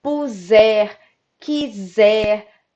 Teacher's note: percebam o s tem som de z